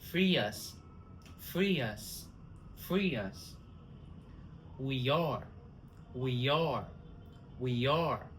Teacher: linking vowel to vowel, adding y sound.